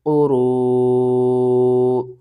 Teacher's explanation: قاف پیش کو، را واو مد پیش رو، قرو، 5 الف کے برابر آپ نے اسے کھینچنا ہے